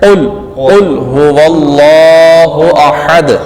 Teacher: بریک والا پڑھیں گے تو معنی الٹ ہو جائے گا، تو اس لیے اس قاف کو مستعلیہ والا قاف ہم پڑھیں گے، یعنی پر کر کے پڑھیں گے